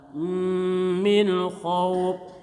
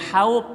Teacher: nun mati bertemu kha namanya izhar halqi jelas nunnya